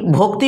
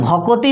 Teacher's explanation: আমরা যখন এই ভক্তি বলছিলাম ভক্তি দুটো দল ছিল আর যখন ভগতি বলছি মানে স্বরধ্বনিটাকে আনা হচ্ছে ভগতি তিনটে দল হয়ে যাচ্ছে